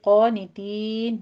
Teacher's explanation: क़ानितीन में क़ाफ अलिफ क़ा है, क़ाफ को पुर पढ़ते हुए फ़तह कायमा अदा कीजिए